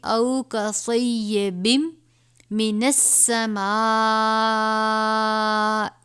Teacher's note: دو زیر ہے اس کو ہم اس میم سے ملا دیں گے اور اس پہ ہم غنہ بھی کریں گے